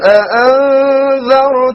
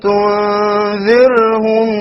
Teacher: change between dhar with a heavy ra and dhir with a light ra